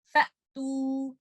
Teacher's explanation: حمزہ کو نہ تو آپ نے قلقلہ کرنا ہے، نہ زیادہ ٹائم دے دینا ہے